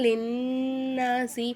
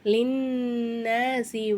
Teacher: நூனுக்கு மேல சத்து வந்ததுனால நூனை நல்லா அழுத்தி உச்சரிக்கணும்